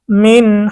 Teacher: নুন সাকিনের পরে ইজহারের হরফ হা এসেছে, স্পষ্ট করে পড়তে হবে